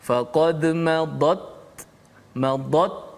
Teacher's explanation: tahan suara, baru lepas angin. Selesai angin ta, baru masuk sin.